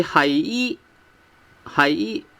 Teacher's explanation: it actually sounds like tone two because it shows a rising tone from from five to one